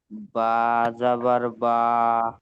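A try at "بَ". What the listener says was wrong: হ্যাঁ, বাতে টান দেবেন না। বা জাবার বা, পড়েন।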